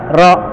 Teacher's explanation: Ro itu ujung lidah yang digetarkan